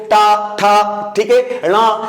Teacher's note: जब इन या इस वर्ग के अक्षरों को बोला जाता है तो जीभ क्या होती है, मुड़ जाती है। आप बोल के देखो, टा, ठा, ठीक है, णा, तो ये जीभ मुड़ रही है, इसे बोलते हैं मूर्धा।